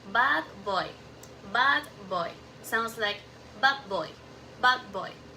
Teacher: The D changed to B because the next sounds B is also made with the lips. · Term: assimilation